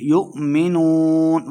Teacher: لَهُمْ لَا يُؤْمِنُونَ حمزہ ساکن کو جھٹکے کے ساتھ پڑھیں گے، یؤمنون واو مد 2 حرکات لمبا کریں گے